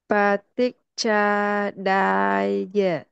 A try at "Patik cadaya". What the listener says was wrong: Yes, excellent, sister. Very good.